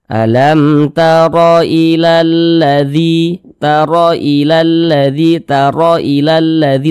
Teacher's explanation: maka huruf ro dibaca tebal, dibaca tabkhim, sehingganya pangkal lisan kita naik terangkat ke atas ketika kita mengucapkannya. Tebalkan huruf ro-nya.